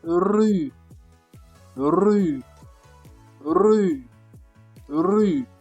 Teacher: the French R comes from the throat, not from the mouth.